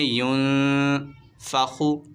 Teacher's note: یہاں پر نون ساکن کے بعد حروف اکفا کا فا ہے، غنہ کریں گے، ینفخو۔ خا حروف مستعلیہ میں سے، اسے موٹا پڑھیں گے